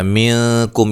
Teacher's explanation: اچھا، منکم یہاں نون ساکن کا اخفا ہے، کاف کو باریک پڑھنا ہے، میم ساکن کا یہاں اظہار ہو رہا ہے، غنہ نہیں کریں گے